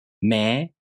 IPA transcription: meː